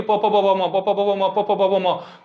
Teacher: प बिना मुंह को सटाए हम लोग प नहीं बोल पाएंगे · प फ का उच्चारण कहां से हो गया होट से